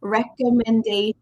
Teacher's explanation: Make sure the final T-I-O-N does not sound like a T. It sounds like shh